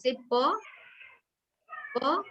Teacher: if you try to say P from the front part of your mouth, your vocal cords will not vibrate. And don't say it loudly, don't say it with force.